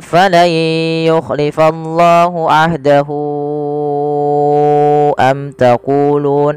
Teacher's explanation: Silah thawilah yang panjang di sini berapa harakat kita memanjangkannya yaitu kita panjangkan sepanjang empat harakat sebagaimana Mad Jaiz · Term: Mad Silah thawilah